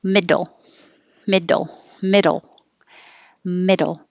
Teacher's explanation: cab cap a little bit shorter middle this is a dull a very quick tap from the d to the l when you say mid your tongue is in the d position and then you just kind of bounce it quickly tap it middle middle middle middle and it's the same as